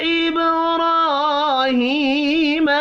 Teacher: را اور ہا کھڑی زبر اور کھڑی زیر کی وجہ سے ایک ایک الف کے برابر کھینچ کر پڑھے جائیں گے